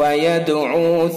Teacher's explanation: یدعو دال کے اندر قلقلہ ہوگا چونکہ حروف قلقلہ میں سے دال اور ساکن ہے اس لیے اس کے اندر قلقلہ ہوگا۔